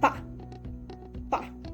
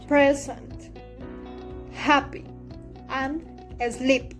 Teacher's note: The air is kept and pressured for a second and the open lips. There is a small explosion of air when the lips open. · There is a small explosion of air when the lips open. The place of articulation is bilabial.